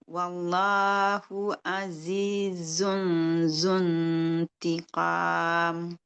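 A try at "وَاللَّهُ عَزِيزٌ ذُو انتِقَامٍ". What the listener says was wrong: Belum. Yang zu yang ini tuh belum keluar lidah. Coba. Kalau dia belum keluar lidah, jadi bunyinya zu. Zu, kemudian zu.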